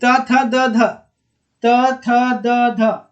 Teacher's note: ऊपर के दांत में जीभ सट रहा है ना